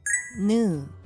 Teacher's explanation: Nu is pronounced with the tongue tip lightly touching the gum Ridge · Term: alveolar sound